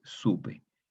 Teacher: La P es consonante labial, entonces labializa la O y la hace más labial. La O es labial, pero la O es más aún. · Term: asimilación